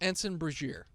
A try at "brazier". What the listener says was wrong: No, not ear. Brazier. Brazier.